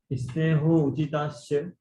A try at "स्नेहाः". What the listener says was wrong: ये स्नेहा स है ना, उसका विसर्ग करो, स का विसर्ग करो।